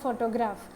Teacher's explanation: ഫോട്ടോഗ്രാഫ് അതിൽ first സിലബിളിലാണ് stress വരുന്നത്.